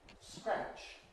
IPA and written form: skræʧ (scratch)